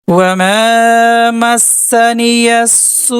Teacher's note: واو میں جزم اور مد ہے، بغل میں حمزہ ہے تو یہ مد متصل ہے، 3 سے 4 الف ٹانیں گے۔